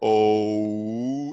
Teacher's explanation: It was originally O, but it degraded to U because you hear U at the very end of O. If you say O long enough, O, it turns into U.